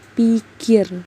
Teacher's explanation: Pada rentetan yang pertama, bunyi huruf P ini akan terpengaruh oleh bunyi huruf I, sehingga ucapan untuk huruf P sedikit banyak sudah diwarnai oleh bunyi huruf I, yaitu kedua bibir sudah mulai melebar pada saat bunyi P diucapkan